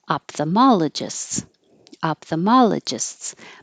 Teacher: there's no l in the middle and it's easier to make a p to go to the th than an F